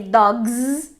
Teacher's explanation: And the third phonological rule was voicing assimilation, which is something that is not in universal grammar, and it's totally different in English and in Portuguese, which is, for example, when we say dogs, we say dogs in English with a Z sound, because the voicing of the previous sound, which is g, spreads to the following sound